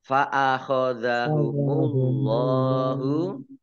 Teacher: Allahnya dibaca tebal karena harakat di depannya domah